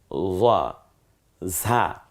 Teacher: ঝি ঝি আওয়াজে বাতাসটা বেরিয়ে আসবে জিহ্বাটা খানিকটা পাতলা হয়ে যাবে ভেতরে